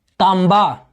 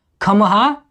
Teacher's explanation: भोजपुरी में मब के स्थान पर म का प्रयोग होता है और मभ के स्थान पर मह का प्रयोग होता है।